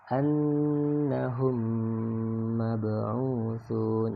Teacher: maka dibaca dengan dileburkan bunyi mimnya yang pertama, ya, lebur ke dalam huruf mim yang berikutnya itu mab'utsun. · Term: idgham mimi